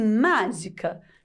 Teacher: a gente já percebe que o má má tem um som mais forte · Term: sílaba tônica